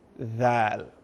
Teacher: When we are saying the letter, pronouncing the letter dhal, the tip of the tongue is coming out. Dhal. That's the first thing.